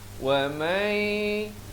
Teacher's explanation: Maafkan, di sini idgham bi gunnah, bukan baca wa man. Di sini kena baca wa may, dua harakat masuk beserta dengung.